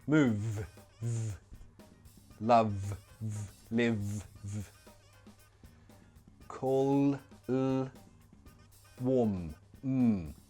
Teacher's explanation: all of these, they produce a vibration in the throat, so they are all voiced sounds